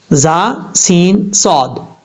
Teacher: زا، سین، صاد، ان 3 حروف میں ان کو پڑھتے ہوئے سیٹی کی آواز آئے گی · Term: حروف صفیریہ